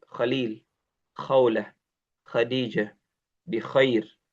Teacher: kha itu tenggorokan bagian atas bersama dengan gha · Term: huruf kha